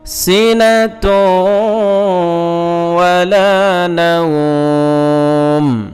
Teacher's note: এই ওয়াওয়ে গুন্না হবে, এদগামে মাল গুন্না, কারণ তানবিনের পরে এদগামে মাল গুন্নার অক্ষর ওয়াও আসছে, এজন্য এরকম পড়তে হবে।